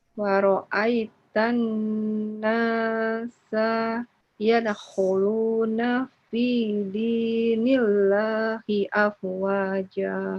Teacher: Nasanya ditahan nun bertasydidnya.